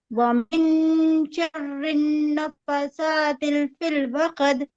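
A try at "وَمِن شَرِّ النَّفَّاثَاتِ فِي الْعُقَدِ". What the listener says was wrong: تھوڑا ادھر ادھر ہو گیا. ادھر نفاثاتی، نفا کھینچنا ہے، سا کھینچنا ہے، تی نفاثاتی فی العقد.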